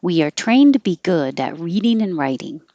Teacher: So, trained, good, and reading should be higher and longer. And all of the other ones that aren't so important are ones we push together and we make sound changes.